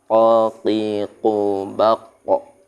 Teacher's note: Tempat keluarnya huruf qaf ada di mana? Pangkal lisan.